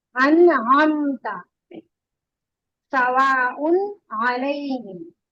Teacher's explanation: नून की आवाज भी क्लियर होगी और उसके बाद हुरूफ हल्की की आवाज भी क्लियर होगी। जैसे अन, अन का नून साकिन भी क्लियर होगा, उसके बाद जो आइन आ रहा है वो भी।